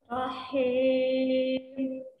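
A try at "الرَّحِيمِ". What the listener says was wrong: Haknya asan tapi kasrohnya kurang lurus. Rahim. Lurus kan?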